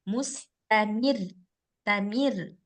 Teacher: sebelum ro dia ada huruf berbaris kasrah maka otomatis rnya harus dibaca tipis dibaca tipis tapi ada tasdid nah perlu penekanan tapi dibaca tipis